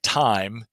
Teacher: I was looking at the monophthongization of the diphthong I